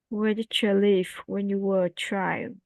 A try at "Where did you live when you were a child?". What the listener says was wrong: Very good.